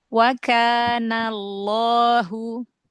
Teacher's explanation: Coba tebalkan lagi lafzul jalalahnya.